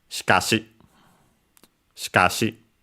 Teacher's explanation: So ka is high, everything else is low.